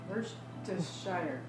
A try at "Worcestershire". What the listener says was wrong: There's no shire in the end. Yeah, Worcestershire.